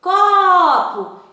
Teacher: esse có tem mais intensidade, tem mais durabilidade, por isso é a sílaba tônica